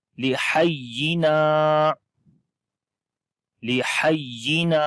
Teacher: لام کے نیچے زیر لمبا نہیں کریں گے، ہا کی آواز کلیئر آئے گی، ہا کو یا کے ساتھ جب ملائیں گے تھوڑا سا سٹرونگ آواز آتی ہے، اور نون کو لمبا کریں گے، الف مدہ ہے کیونکہ الف سے پہلے زبر آ گئی۔